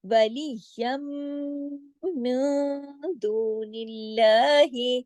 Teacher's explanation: اخفا حقیقی غنہ کاملہ ہوا، second level کا اخفا، آواز کچھ ناک میں گئی کچھ باہر رہی. اب آگے دال ہے، دال باریک حروف ہے، اخفا بھی باریک ہوا.